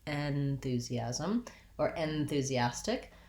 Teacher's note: this first syllable in the letters en is unstressed at the beginning, we don't really say it with the red tent vowel